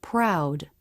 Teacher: when R is in a beginning consonant cluster the lips may not be as tight as in a beginning r